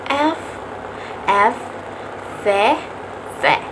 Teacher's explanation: bunyi yang dihasilkan oleh pergerakan bibir bawah menyentuh gigi atas. Bibir bawah ini berfungsi sebagai artikulator, kemudian gigi bagian atas berfungsi sebagai artikulasi.